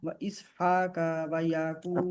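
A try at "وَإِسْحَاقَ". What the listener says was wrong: का नहीं, का के आगे अलिफ नहीं है।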